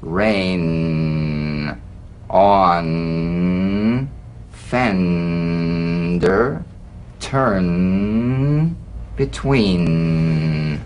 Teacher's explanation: the N is a nasal consonant made with the tongue blade to the upper gum Ridge it's most resonant and it's well forward placed it's a melodic